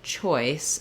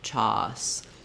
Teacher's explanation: So making sure that you get that gliding oi is really going to be what you need for this sound. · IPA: /ɔɪ/